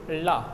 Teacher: आप ला को जब बोलोगे, ला, जब आप ला बोल रहे हो ना तो आपकी जीभ पलट जाती है और पलट के जीभ के छत पे लगती जाती।